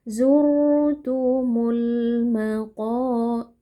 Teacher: Alif lam yang bertemu dengan huruf mim yang merupakan huruf qamariah. Alif lamnya dibaca dengan sukun yang jelas. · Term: alif lam qamariah, alif lam qamariyah